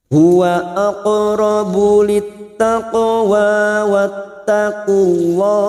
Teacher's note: qaf sukun qalqalah sugra yang mati asli di tengah kalimat kita pantulkan. Huwa aqrabu lit, masuk pada huruf ta yang bertasdid littaqwa.